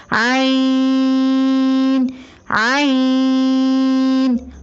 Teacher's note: عین کی ادائیگی میں زبان کی جڑ کو حلق کی طرف مضبوطی سے دباتے ہوئے باریک اور رگڑ کھاتی ہوئی آواز میں پڑھیں